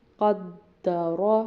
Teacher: رو کو پر پڑھیں گے کیونکہ اس پر زبر آ رہی ہے